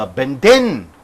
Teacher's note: So since it is a verb, the last syllable should be stressed.